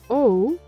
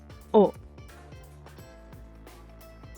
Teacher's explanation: This is similar to the English O, but it's a bit shorter. So not O, but O.